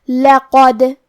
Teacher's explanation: کلمت لقد میں حرف القاف کو موٹی آواز میں پڑھیں گے اور حرف الدال کو ہلاتے ہوئے پڑھیں گے، کیونکہ یہاں دال کا حکم ہے قلقلہ۔